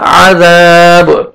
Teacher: با حروف قلقلہ میں سے ہے, ڈبل ساؤنڈ آئے گا